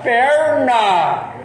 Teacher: E aí você tem o N no céu da boca, que é o N do caipira